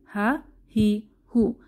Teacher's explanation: এই হামজাহ এবং হা আমরা জেনেছিলাম কণ্ঠনালী শুরু থেকে বের হয় কণ্ঠনালী শুরু থেকে হামজাহ এবং হা উচ্চারিত হয়